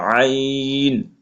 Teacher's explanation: আইন হরফ কণ্ঠনালী বা গলার মধ্যখানে হইতে উচ্চারণ হয়, এই জন্য একটু চাপ দিয়ে পড়তে হবে